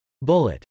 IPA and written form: bˈʊlət (bullet)